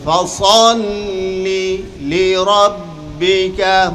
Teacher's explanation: প্রথম লামটা প্রথম শব্দের শেষ, দ্বিতীয় লামটা পরের শব্দের শুরুতে হয়েছে। দুই শব্দে দুইটি লাম, তো প্রত্যেকটি লাম আলাদা উচ্চারণ হবে।